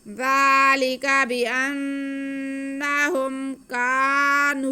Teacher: بأنہم، ذالک بأنہم کانوا، کاف پہ زبر اور ساتھ میں الف، تو یہ الف مدہ ہو گیا۔ کاف کی آواز کو ہم ایک الف کے برابر کھینچیں گے۔ آگے نون پہ پیش اور واو ساکن، تو یہ واو مدہ ہو گیا ہے۔